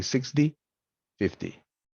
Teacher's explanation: the t in these numbers is pronounced as a flap or a fast d